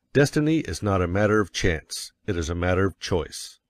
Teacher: you will put some emphasis on not